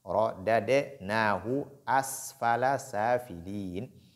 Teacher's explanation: Dans ce cas, c'est la deuxième, c'est la seconde qui est sakina, donc on dit thumma ra-da-de. Donc il n'y a pas d'assimilation, il n'y a pas d'idgham. On lit les deux de façon séparée.